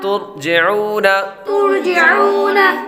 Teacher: آگے واو ساکن سے پہلے پیش ہو تو واو مدہ ہوتی ہے، اس لیے حروف مدہ کو ایک الف یعنی 2 حرکات کے برابر کھینچ کر پڑھیں گے